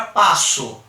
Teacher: pela pronúncia que a gente faz, o som que esse O faz é de U, por isso a gente tem aqui o fonema U. Então são 5 letras, mas apenas 4 fonemas.